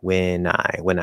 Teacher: kind of sounds like way nigh instead of win i right there's no division between the n and the i